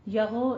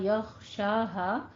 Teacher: غین کو آپ نے ادنا حلق سے ادا کرنا ہے. غین حروف مستعلیہ میں سے ہے، اس لیے پور رکھیں گے آواز کو اور قلقلہ نہیں کرنا، یغو نہیں کہنا ہے.